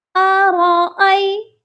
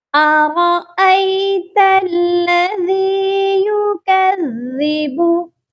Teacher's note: را الگ پڑھا جائے گا اور حمزہ کو یا کے ساتھ ملا کر پڑھیں گے، یا لین ہے